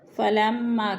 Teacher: فَلَمَّا کی میم مشدد سختی سے جمع کر پڑھیں گے. ما پہ الف مدہ ہے، الف خالی سے پہلے میم کے اوپر زبر ہے تو ادھر الف مدہ.